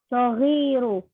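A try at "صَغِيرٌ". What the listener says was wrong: Sawirun. Baik tanwin, Bu.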